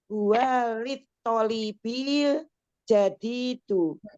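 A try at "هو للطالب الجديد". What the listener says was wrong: Soalnya dipanjangkan. Tolibil jadi di. Tidak ada tanwinnya. Huwa lit tolibil jadi di. La huwa lit tolibil jadi.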